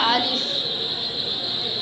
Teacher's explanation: মুখের খালি অংশ মধ্যখান হতে